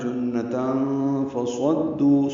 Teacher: جنتن میں نون مشدد پہ غنہ ہے اور تنوین کے بعد فا آنے کی وجہ سے اخفا ہے